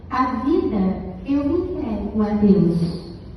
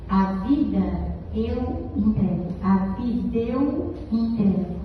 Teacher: Eu não juntei, eu não aproximei, eu fiz o A de vida sumir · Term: elisão